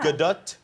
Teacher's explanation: Gadot requires a hard emphasis on the second syllable.